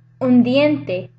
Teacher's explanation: Okay, then you have un diente. The D is dental as well, so the N becomes dental due to assimilation.